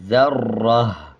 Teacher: اب جب اس پہ وقف کریں گے تو اس کو ہا پڑھیں گے اور دونوں زیر کو سائلنٹ کر دیں گے اور وقف کرتے ہوئے آدھے ہا کی آواز آئے گی